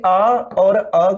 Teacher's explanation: आ और अ का उच्चारण स्थान जो होता है वो कंठ होता है